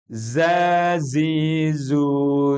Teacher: jangan di samakan Za ada getarannya yang ini harus ditampakkan secara jelas